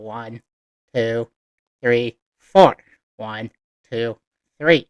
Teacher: Like in English, when we count, we go 1, kind of with a rising tone.